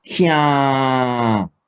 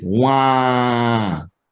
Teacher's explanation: You're pronouncing the ah sound, but in your nose, like you have a cold.